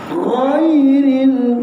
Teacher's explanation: huruf gha ini disebut sebagai huruf yang berada di pangkal kerongkong yang berhampiran dengan huruf Kha sebab itu apabila kita bersebut huruf gha ini dia akan ada · apabila kita bersebut huruf gha ini dia akan ada bunyi kahak sedikit dan kahak itu tidak terlampau kuat